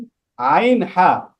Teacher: দুই নাম্বার মাখরাজ হলক মানে কণ্ঠনালী হলকের মধ্যখান হইতে আইন হা